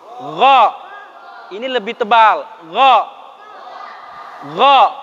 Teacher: Gha temannya kha. Tempatnya barengan.